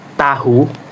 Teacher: Cara artikulasinya yaitu ujung lidah menyentuh gusi bagian belakang gigi atas. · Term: hamat alveolar tak bersuara